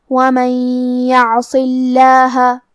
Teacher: عین کی ادائیگی حلق کے درمیان والے حصے سے ہے، اور کیونکہ اس پہ جزم ہے تو ہمیں حرف العین کو ظاہر کرنا ہے. · صاد حروف التفخیم میں سے ہے تو ہم یہ حرف کو بھاری آواز میں پڑھیں گے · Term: حرف الصاد